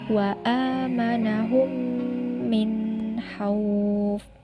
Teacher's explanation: Jadi, jika ada nun sukun atau tanwin bertemu dengan salah satu huruf ishar, yaitu ain, hamzah, ha, kho, dan ha, cara membacanya jelas dan terang dan tidak diperbolehkan untuk mendengung. Contohnya, wa amanahum min hauf.